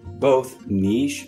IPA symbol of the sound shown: niʃ